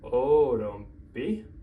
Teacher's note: So we can just add MPI, but we're going to have to soften that T to a D